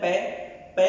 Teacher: पै जब बोलते हैं तो हमारा अवरोध होता है ओष्ठ पर।